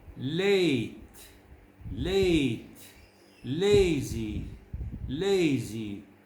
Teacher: the first diphthong a begins with a slightly more closed sound than the a in head and bent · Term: diphthongs